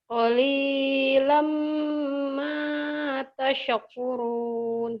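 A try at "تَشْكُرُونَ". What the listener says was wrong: Tasyek, jangan tasyek, tash aja. jangan ada e-nya. Tash.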